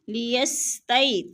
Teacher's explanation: لیستئی، تئی پہ یالین ہے، یالین کو لمبا بھی نہیں کرنا اور جھٹکا بھی نہیں دینا بلکہ آرام آرام سے پڑھنا ہے۔